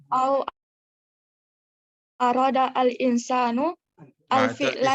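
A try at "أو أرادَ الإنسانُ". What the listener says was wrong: Disambung aja. Au aradal insanu. Jangan al insan. Au aradal insanu.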